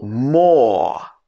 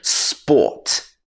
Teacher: And then you need to master the or sound. This is a long vowel sound in British English.